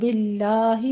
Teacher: باللہ میں لفظ جلالہ باریک ہے